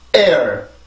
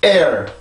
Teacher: 항상 앞에 있는 모음에만 강세가 가고요. 뒤에 있는 모음에선 소리 흔적만 남겨주는 거예요. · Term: 이중모음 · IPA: eər